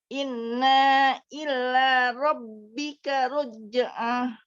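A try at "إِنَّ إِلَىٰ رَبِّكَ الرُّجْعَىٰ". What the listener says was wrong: Oke, Robbikar sudah bagus. Sekarang innanya ya.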